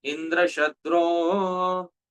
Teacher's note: Dear devotees, Sri Jiva Goswami explains that the first meaning which was intended by Tvashta, Indrasya Shatru, Indra's killer, is called, according to grammar, Tat Purush Samas. Tatpurush Samas, the final swara, the final vowel has to be Udat, high accent. So, Indra Shatro, this should have been the pronunciation.